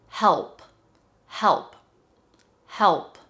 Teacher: with the dark L, there's no contact. I don't touch the tip of my tongue to the roof of my mouth or the back of my teeth at all